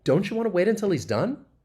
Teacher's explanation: You hear that rising intonation at the end? · this is a yes-no question. So you can hear that rising intonation. Actually, I should go this way, rising intonation at the end.